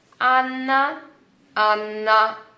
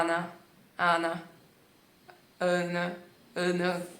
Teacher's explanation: Em vez de falar Ana, Ana, Ana, Ana. Em português, quase que se toca muito pouco a língua no céu da boca, muito pouco. Assim, a língua fica muito mais pra dentro, relaxada.